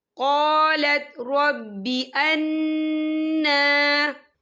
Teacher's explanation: نون کے پر کھڑی حرکات ہے تو ہم اسے 2 یا 3 حرکت کے برابر کھینچ پڑھیں گے، اور یہاں پر نون مشدد بھی ہے تو یہاں پر غنہ ہوگا۔